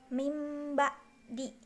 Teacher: Adapun menurut istilah, iqlab yaitu cara membaca nun mati atau tanwin yang bertemu dengan satu huruf iqlab, yaitu ba. Cara membaca nun mati atau tanwin di sini yaitu dengan cara mengubahnya menjadi mim.